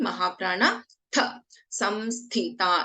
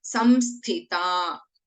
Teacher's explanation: we have Sa and again Mahaprana Tha. Samsthita. Last Tha, this one is a Alpaprana Tha.